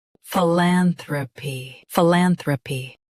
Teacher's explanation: Stress lan. Keep thra soft, then p clear.